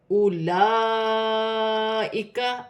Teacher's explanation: الف پر ہم پیش کی حرکت ہے، الف کو حمزہ پڑھا جائے گا۔ اولائک، لام پر کھڑی زبر ہے اور بڑی مد متصل 5 الف کی مقدار تک کھینچ کر پڑھا جائے گا